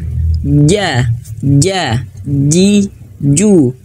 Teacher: kalau huruf Jim itu di tengah lidah